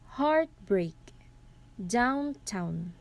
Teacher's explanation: a metrical foot that has two syllables that are consecutively stressed. The structure stressed and stressed. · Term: spandi